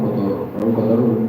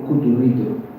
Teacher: la escribes cotur ritu Pero pronuncias cutur porque es simplemente por asimilación vocálica